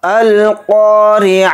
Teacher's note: अल-क़ारिआ, पहले इस तरह से आयत पढ़ेंगे फिर समझेंगे। इसमें क़ाफ को यहाँ पर मोटा पढ़ना है और क़ाफ के साथ अलिफ मद्दा है तो क़ाफ अलिफ ज़बर क़ा को थोड़ा खींच कर पढ़ना है। रा के नीचे ज़ेर है, रा को बारीक पढ़ेंगे और ता को यहाँ पर हाय साकिना बना देंगे हालत वक्फ की वजह से, यानी आयत होने की वजह से।